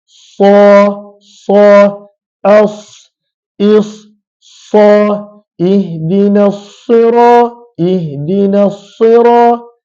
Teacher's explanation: dalam gigi bawah dan dia ada sifat khusus iaitu sifat safir bunyi kuat bunyi yang tajam desiran Yang kuat ketika mana menyebut huruf sad · sad maka kita dah kenal makhraj dia Apakah makhraj huruf sad hujung lidah yang perlu diletakkan pada bahagian dalam gigi bawah dan dia ada sifat khusus iaitu sifat safir bunyi kuat bunyi yang tajam desiran Yang kuat